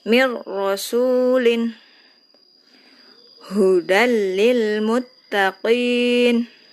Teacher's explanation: jangan dipanjangkan, jangan mir, tapi langsung cukup dimasukkan saja tanpa dengan gunnah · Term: idgham bila gunnah